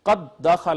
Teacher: اگر ایسا ہو کہ پہلا حرف ساکن اور دوسرا متحرک ہو تو لازمی طور پہ اور واجب طور پہ ہم نے اس کو ادغام کرنا ہوتا ہے۔ اب پہلی دال ساکن تھی، دوسری متحرک تھی، پہلی کو دوسری میں ضم کر دیا، یہ قد دخل کی بجائے قد دخل ہو گیا، تو ایسے ادغام کو ہم کہیں گے ادغام واجب، یعنی یہ ادغام کرنا واجب ہوتا ہے پہلے حرف ساکن ہو اور دوسرا متحرک ہو تو۔